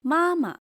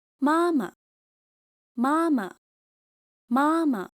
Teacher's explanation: See how the second ma is light and unstressed. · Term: neutral tone